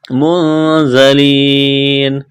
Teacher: یہاں پر زام سیٹی کی آواز پیدا کریں گے، یا مدہ ہے الف کے برابر کھینچنا ہے.